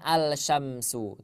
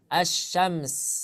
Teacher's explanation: Apabila ada alif lam bertemu dengan syin maka langsung ke huruf syinnya